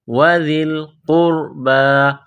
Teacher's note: قاف کو موٹا کرنا ہے، را کو موٹا کرنا ہے. قاف را پیش قربى کڑا زبر با قربى.